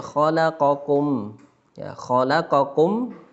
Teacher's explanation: mim sukun ketemu dengan huruf hamzah kita juga baca jelas hurufnya mim sukun nya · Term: Idhar